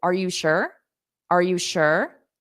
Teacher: I still pronounce the U but I just say it very quickly